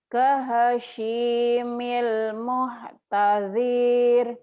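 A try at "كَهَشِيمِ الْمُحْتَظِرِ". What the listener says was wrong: Pendek. Muhtadir. Nggak ada madnya kan? Ayo lagi.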